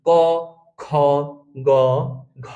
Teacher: আপনারা যদি মুখে বলেন ক খ ঘ তাহলে আপনারা বুঝতে পারবেন খ এবং ঘ এ জোরে জোরে বাতাস লাগছে তাহলেই কিন্তু আপনারা বুঝে যাবেন যে এগুলো হচ্ছে মহাপ্রাণ বর্ণ আর